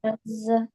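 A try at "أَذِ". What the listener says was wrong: Za not. This is not Zal Zabar Za. Zal Zabar Za. This is Zal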